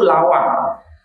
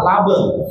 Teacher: Orang Madura kesulitan mengucapkan huruf W, bergeser menjadi B. Huruf B dan W itu sama-sama huruf bibir.